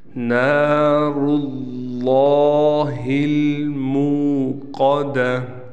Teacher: یہاں را بھی موٹا پڑھا جائے گا، لفظ اللہ کا نام بھی موٹا پڑھا جائے گا